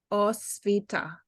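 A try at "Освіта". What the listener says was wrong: Yeah, and we don't have this aspiration on t like it's in English. We have it without aspiration. Osvita, like this.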